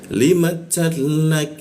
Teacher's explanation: Hurufnya langsung masuk ke tasdid di depannya, tapi tidak usah ditahan